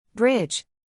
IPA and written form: brɪdʒ (Bridge)